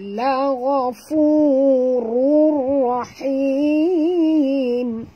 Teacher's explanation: jangan baca la gha ya, bunyi dia mesti tebal